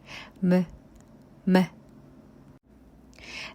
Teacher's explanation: pronounced by closing both lips together and letting the air pass through the nose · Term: bilabial nasal sound